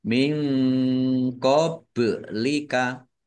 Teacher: Nun sukun bertemu dengan huruf qaf juga bacaan ikhfa dibaca samar-samar. Bak sukun bacaan kolkolah dibaca memantul ditampakkan pantulannya.